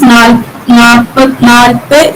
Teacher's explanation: Nalpadu in standard Malayalam becomes nalpe in Kadathanadan, that is du gets deleted here. The word final syllable du gets deleted.